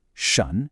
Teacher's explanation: This is a second tone. So your voice rises almost like you're asking a question in English.